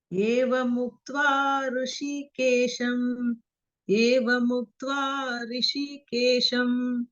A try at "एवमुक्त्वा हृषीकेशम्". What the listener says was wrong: Not rishi bagini. Rishi is different from hrishi. That half ha is ha and r. Hrishikesham. Rishi is r, but here hr. So that h sound should be here. Hrishikesham. It is not rishi, it is hrishi. That half should be here.